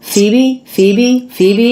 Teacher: from CB yet so the pH makes the F sound and both the stress and the unstressed syllables in this name have the same vowel that is the E vowel